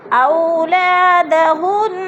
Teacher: ہن پہ نون مشدد ہے، سختی سے جما کر پڑھیں گے